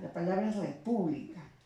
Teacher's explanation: Lleva la mayor intensidad en la sílaba pu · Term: sílaba tónica